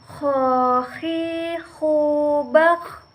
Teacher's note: Huruf ini dikeluarkan dari tenggorokan yang terdekat dari rongga mulut. Ciri khasnya terdengar seperti orang mendengkur. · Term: huruf kho